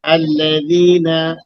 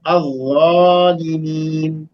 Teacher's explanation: अब देखिए वहां बारीक था, अल्लज़ीना बारीक, और इसको मोटा करना है, यही सिफत उसको उससे अलग करेगी। जाल बारीक हर्फ है और जा मोटा मोटा है, जा मोटा है। तो जो मोटा हर्फ है उसको मोटा अदा करेंगे, बारीक वाले से मुमताज हो जाएगा।